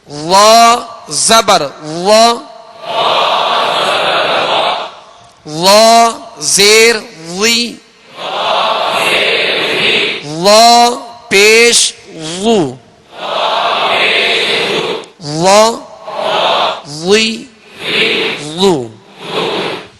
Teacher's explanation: جو وا ہے حروف مستعلیہ میں سے ہے، اس کو پر پڑھیں گے اور پیش زیر میں ہونٹ گول نہیں کریں گے